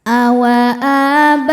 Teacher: Sukun bertemu sukun tidak bisa dibaca sehingga sukun pertama dilepaskan. Maka nun fathah tanpa alif bacanya pendek.